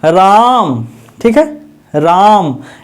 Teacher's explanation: राम को थोड़ा लंबा खींच करके राम बोलना है तो बड़ा हो गया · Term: पलुत स्वर